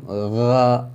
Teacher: حمزہ ہا، عین ہا، غین خا، اور بعض علماء کرام شروع حلق اسے بولتے ہیں سینے کی طرف سے حمزہ ہا، عین ہا درمیان حلق، اور غین خا آخری حلق منہ کی طرف سے، یعنی جہاں سے غرارہ کرتے ہیں پانی لے کے ہم غا ایسا آواز آتی ہے، اس طرح سے۔